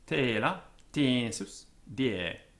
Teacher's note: E, as in the French E, a closed E sound. So it is the first part of the English diphthong in skein and grey and ray and rain.